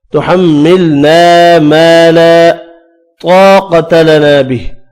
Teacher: الف مدہ 3 ہے, تینوں ایک ایک الف کی مقدار میں کھینچ کر پڑھنے ہیں. تحملنا میم مشدد غنے کے ساتھ پڑھا جائے گا